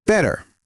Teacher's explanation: This is called a flap T. Your tongue just taps quickly.